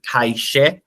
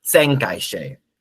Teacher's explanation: The past tense marking is marked by the prefix sang, so that's going to draw stress, as you see, from kai she, which is to break, versus sang kai she, broke, or I guess was breaking, if you will.